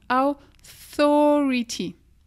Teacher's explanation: TH, n'oublie pas, c'est le S, tu saussotes fort. Tu sors la langue. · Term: le TH anglais